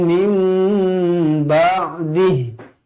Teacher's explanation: Mim ada mim, nun bertemu ba, di tengah-tengahnya ada mim kecil, ekornya ke bawah bertemu ba, iklab, dibaca dengan dua harukat.